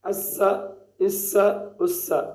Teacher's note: सीढ़ी की आवाज़ भी है और हरफ मोटा भी है